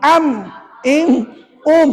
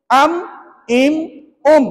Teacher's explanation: nak sebut mim kata ulama Kamu kena tutup bibir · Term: syafawi